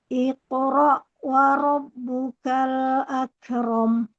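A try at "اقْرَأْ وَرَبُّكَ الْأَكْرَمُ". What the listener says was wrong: Ya, jangan iqro. Jangan bareng-bareng. Selesaikan dulu kol-kolahnya.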